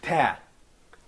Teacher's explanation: So if you can find, if you just have a wider outlook for the sounds in Arabic, you can find that some sounds are produced in the frontal side of the oral cavity, like ta. I put the tip of the tongue against the alveolar ridge.